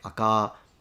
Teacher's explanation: But another thing I'm noticing that he's not really writing down is the fact that he seems to be lengthening the final vowel. It's not just that he says aka, and in standard Japanese it's aka, but it sounds more like aka.